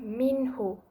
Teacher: Apabila nun mati bertemu dengan ha bulat jadi hukumnya nun mati mesti disebut dengan jelas tanpa dengung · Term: izhar halqi